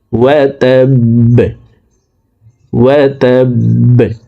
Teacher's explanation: বা কলকলার হরফ নিচের দিকে ধাবিত করে বাকে সাকিন করে ফেলবো।